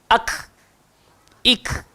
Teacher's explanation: Pangkal lidah tapi dia kena ke depan sikit. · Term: huruf kaf